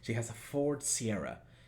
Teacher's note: En este caso tenemos la S que le va a sacar la vibración a la D.